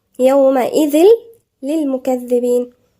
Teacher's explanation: احنا هنا عرفنا امتى بنقول كامل، لما بيكون الحرف اللي بعده مشدد، يبقى إذل إدغام كامل بغير غنة، يعني التنوين نفسه أدغم في اللام كله، ذهب كله، التنوين والغنة كمان مش موجودة